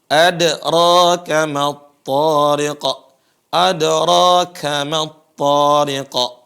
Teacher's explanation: Perhatikan huruf dal, dia harus qalqalah.